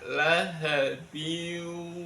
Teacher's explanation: bunyi n pada kasrotinnya langsung masuk ke dalam wau. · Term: idgham bighunah, idgham bil gunnah